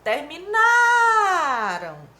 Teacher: terminaram está no pretérito perfeito ou seja no passado e a sílaba tônica é a penúltima Terminaram a sílaba tônica é a penúltima terminaram indica tempo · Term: paroxítona